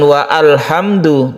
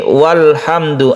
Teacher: Lain kalau kita membaca alhamdu itu adalah alnya itu hamzah wasal, maka kalau dibaca waw di depannya bukan wa alhamdu tapi walhamdu, a-nya tidak dibaca. Itulah perbedaan antara hamzah wasal dan hamzah qata' ya.